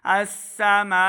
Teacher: आप देखिए यहाँ पे वक़फ़ किया है तो अलिफ लाम खाली है, तो यहाँ पे हमने अलिफ के ऊपर ज़बर लगानी है, हमज़ा बनाकर इसको ज़बर के साथ हमने यहाँ से पढ़ना है अस्समाउ। मीम के ऊपर बड़ी मद है तो हमने इसको लम्बा करना है, हमज़ा पेश ऊ, हमज़ा की आवाज़ को लम्बा नहीं करेंगे